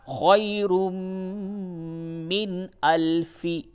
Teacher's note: اس جگہ پہ اظہار ہوگا، یعنی نون کی آواز کو بالکل ظاہر کر کے پڑھیں گے